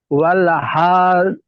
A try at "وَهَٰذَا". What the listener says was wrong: ওয়াল না, ওয়াহা ওয়াহা হা টান দেন।